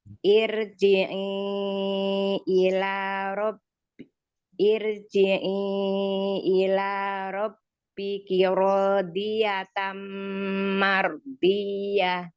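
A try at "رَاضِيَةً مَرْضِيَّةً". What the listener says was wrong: Tapi yang rodiyahnya kurang istilah. Coba itu sama Umi kayaknya huruf ro-nya yang ro fathahnya juga kurang tebal sedikit. Shotnya yang di atas juga kurang tebal sedikit, tapi kayaknya makrotnya udah benar, cuman kurang tebal aja, kurang keangkat pangkal lidahnya. Karena di sini banyak ya huruf shot gitu ya.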